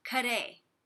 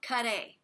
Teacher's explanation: But in the meantime, if you want to make a really big shadow vowel in between the C and the R